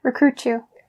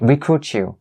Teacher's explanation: Okay, so recruit you. So here, that really brings up the principle of turning or changing the T sound into the CH sound. So you don't say recruit and then you, but when you link the T sound here with the y sound, that starts the word you here. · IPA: tʃ